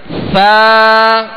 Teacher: سا کو نرمی کے ساتھ پڑھنا ہے، اس میں سیٹی کی آواز بالکل پیدا نہ ہو. سا اور سا کو ادا کرتے ہوئے زبان کا سرا اوپر کے دو دانتوں کے اندرونی کنارے سے لگے گا.